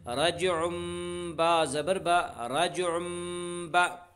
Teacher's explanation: تنوین کے بعد با اس لیے تنوین کو میم سے بدل کر غنہ اور اخفا کے ساتھ پڑھیں گے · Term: اقلاب